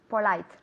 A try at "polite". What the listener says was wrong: Perfect, muy bien. Fijaos bien en la buena pronunciación de Almudena.